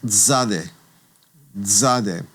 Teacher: zade is one of those unique sounds because it's a ts that's blended together or a tz that's blended together